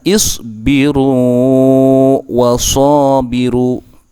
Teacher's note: Sedangkan di sini, untuk wawu, itu tidak diperbolehkan. Wawu pertama yang tidak diucapkan harus dipanjangkan